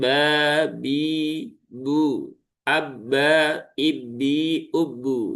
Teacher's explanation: Ee ba ini juga sering menjadi perhatian karena beberapa sahabat kita ya masih ada membaca dengan bi ba bi bu sehingga huruf ba mengeluarkan sifat hams. Padahal huruf ba dia tidak punya sifat hams. Dia punyanya adalah jahr.